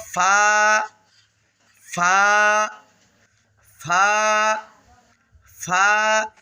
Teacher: ফা উচ্চারণের সময় সামনে যে দাঁতগুলো রয়েছে অর্থাৎ উপরের দাঁতগুলো এগুলো নিচের ঠোঁটের যে পেটটা রয়েছে পেটের সঙ্গে লাগাইয়া উচ্চারণ করবেন। ঠোটে ঠোটে আবার লাগাবেন না।